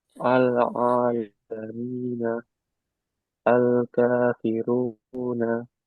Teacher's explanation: Itu Al-Qamariyah. Lamnya dibaca jelas.